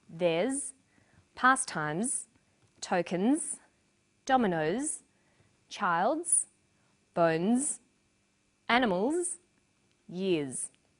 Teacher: after vowels and diphthongs, the final S is pronounced z.